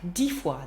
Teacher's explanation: that sort of S sound on the end that we say when we say the number by itself. 10 disappears.